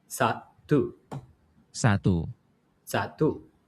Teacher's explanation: pure vowels a, e, u, o. No English gliding. So A is a, e, I is e, u is u, o is o.